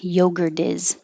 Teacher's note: now the T is between two vowel or two voiced sounds, the R, yogurt, and is, the vowel for is. So now the T changes to a D.